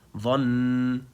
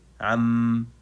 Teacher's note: I still have to apply the ghunna even if it's located in the very end